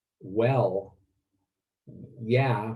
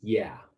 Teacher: he does say yeah in there but it's more like well yeah with rising intonation